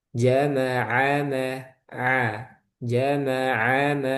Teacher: Ainnya jangan o tapi a